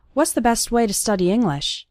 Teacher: And the T at the end of best also kind of disappears.